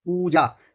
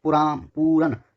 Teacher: ओष्ठ जिसमें आपके होंठ भिड़ेंगे, पा वर्ग वाले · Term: ओष्ठ ध्वनि